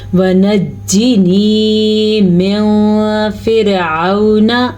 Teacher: یہاں پہ نون ساکن کے بعد فا ہے اور فا حروف اخفا میں سے ہے تو ہم اس کو چھپائیں گے، میوں، یہ کسی طرح تھوڑا بہت چھپانا ہے اور غنہ بھی کرنا ہے۔